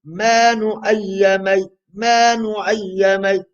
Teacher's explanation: So I'm only reciting the ma for 2 vowels because it's a mad asli.